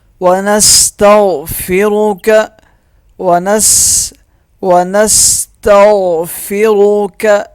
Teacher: را موٹا پڑھا جائے گا